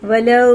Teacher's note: واو ساکن سے پہلے زبر ہے تو جلدی پڑھیں گے، واو ساکن سے پہلے پیش ہے تو اسے تھوڑا کھینچ کے پڑھیں گے الٹا پیش کی طرح۔